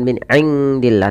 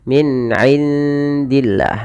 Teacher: samarkan bunyi nun ke arah makhraj dari huruf dal. Huruf dal adalah huruf yang keluar dari ujung lidah, bertemu dengan batas antara gigi seri atas dan gusi. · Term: ikhfa